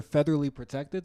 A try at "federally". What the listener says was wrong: Federally. Federally. You said featherly, like a bird's feathers.